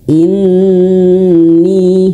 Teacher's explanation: Inni nun bertasydid harus ditahan. In tahan ya dua harakat.